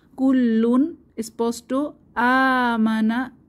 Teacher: তানভীনের পরে হামজাহ এসেছে ইজহার স্পষ্ট করে পড়তে হবে